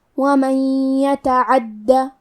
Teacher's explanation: حدود اللہ، کلمت ومن کے آخری میں نون ساکن ہے پھر حرف لیا ہے کلمت یتعدی، یا حروف الادغام بغنہ میں سے ہے تو ہم یہ حکم کو غنہ اور تشدید کے ساتھ ادا کریں گے